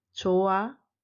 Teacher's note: Be careful, the final consonant h is silent.